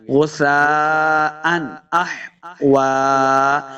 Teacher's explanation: یہاں پہ اظہار کا قاعدہ ہے، یعنی بغیر غنہ کے پڑھیں گے